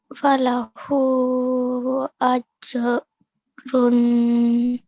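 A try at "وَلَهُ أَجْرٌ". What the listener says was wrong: Very good. Much, much better. Excellent. So really, really nice. You said all the sounds really well.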